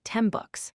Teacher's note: the final N sound becomes an M sound because the M and B sounds are made in a similar way. So it sounds like 10 books. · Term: assimilation